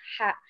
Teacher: H ini kita sebutnya H kecil, dia dibaca mendesah gitu ya.